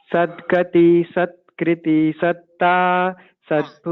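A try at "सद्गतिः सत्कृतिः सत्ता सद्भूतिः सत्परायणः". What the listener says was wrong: Don't split. Don't split. Don't give a pause in between.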